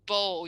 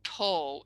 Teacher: if with ball you don't use the voice and you say p, then you get Paul